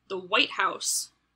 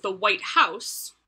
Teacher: as opposed to the white house where the emphasis is on house · you put the emphasis on the word white english speakers recognize that as meaning the specific building in washington